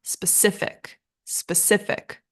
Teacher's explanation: and our stress is on the second syllable